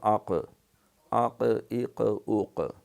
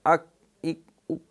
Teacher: اس کے مخرج میں جنبش پیدا ہوتی ہے اور آواز پلٹ کے آتی ہے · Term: قلقلہ